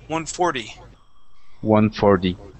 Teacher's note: You want to pronounce that d sound in English like a Spanish r.